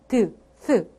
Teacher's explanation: 윗 잇몸 과 혀끝이 부딪히면서 소리를 낼 거야